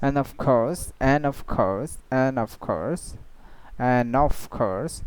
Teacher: So actually it was the and of course, but they didn't pronounce the D sound